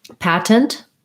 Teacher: both t's are stopped